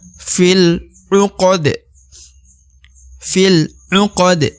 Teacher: Kemudian huruf da yang di ujung dibaca pantul ya. Karena huruf dal adalah huruf waqaf atau huruf berhenti. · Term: qalqalah besar